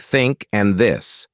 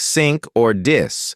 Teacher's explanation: place your tongue gently between your teeth and blow air out for think. For this, do the same, but use your voice.